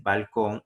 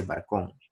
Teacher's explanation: en vez de decir balcón, hay gente que dice barcón